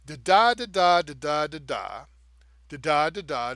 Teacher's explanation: And I'm giving a resolved tone on the end, and every second beat I'm emphasizing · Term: iambic pentameter